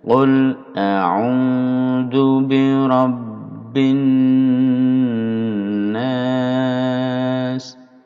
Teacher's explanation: A'udzu bi langsung, zu bi langsung, tidak boleh dipanjangkan pada zunya. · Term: pendek